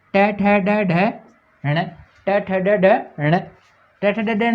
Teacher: देखो मूर्धन्य वर्ण किसका स्पर्श करेगी? जीभ मूर्धा का स्पर्श करेगी।